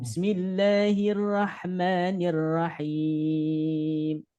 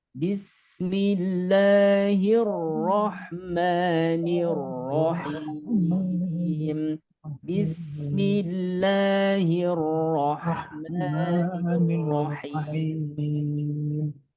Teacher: Nah, di sini ada 2 ro. Ini dibacanya tebal. Istilah tajwidnya tabkhim. Jangan sampai bunyinya ke A.